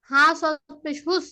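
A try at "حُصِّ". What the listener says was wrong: হরফগুলো হরফগুলো আরেকটু টান দিতে হবে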